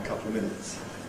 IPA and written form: ə ˈkʌplə ˈmɪnɪts (a couple of minutes)